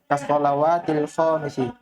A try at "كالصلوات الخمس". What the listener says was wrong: La. Kenapa panjang ho-nya? Khamsi.